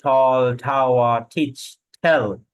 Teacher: টি এর উচ্চারণটা আমরা একটু ঠি দিয়ে ঠেলা দিয়ে বলি। তাহলে আমরা এখন থেকে টি এর উচ্চারণটা কি বলবো, ঠির মতো করে উচ্চারণ করবো।